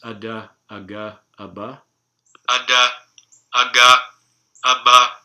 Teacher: I'm producing this with a little bit more stress on the second vowel. It's hard to produce perfectly even vowels for an English speaker.